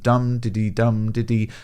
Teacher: one stressed syllable followed by two unstressed syllables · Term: dactylic